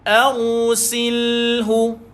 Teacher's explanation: Ra ini dibaca dengan tebal disebabkan sebelumnya huruf Hamzah itu baris di atas. Maka menyebabkan ra ini dia mati dengan tebal.